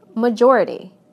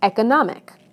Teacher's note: Listen to how the stress moves right to the syllable immediately before the suffix. Adding this to major, it becomes majority.